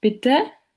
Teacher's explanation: The mid-central vowel appears in the second syllable of the word Bitte